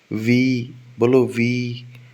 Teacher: नीचे वाले होठ से ऊपर वाले दांत टच कर रहे होंगे। तो लेबियोडेंटल दो, है ना, लोअर लिप अपर टीथ, फ और वी वाला व।